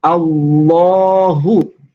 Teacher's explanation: ketika dibaca tafkhim, maka harus ditebalkan lafaz lamnya.